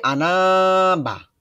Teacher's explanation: যখন আনার পরে বা আসছে তখন এই আনাটা লম্বা হয়েছে